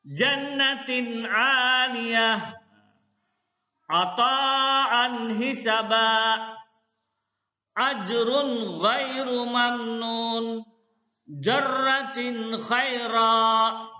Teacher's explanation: Secara istilah ijhar khalqi maksudnya atau artinya mengucapkan huruf nun sukun atau nun mati atau tanwin dengan jelas tanpa dengung